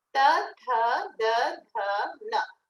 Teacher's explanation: see how the tongue goes behind the upper teeth